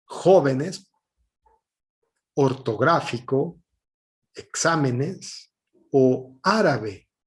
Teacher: su sílaba tónica sea la ante penúltima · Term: esdrújulas